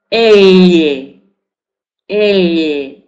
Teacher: Todo lo que sea medio de la parte de la encía media y que pronunciemos a partir de la mitad de la boca, elle, palatal. Entonces, el dígrafo elle es palatal. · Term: fonema lateral palatal